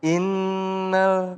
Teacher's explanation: Berarti kalau nun bertasdid yaitu harus dibaca dengung. Tempatnya di hidung.